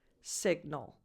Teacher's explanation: The stress is on the first syllable, so at the beginning of the word, and the vowel is a lax I, signal.